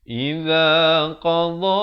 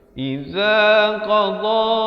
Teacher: makhrajnya di tepi lidah. Tepi lidah bawakan. Kalau tepi kanan bawa ke kanan, tepi kiri bawa ke kiri.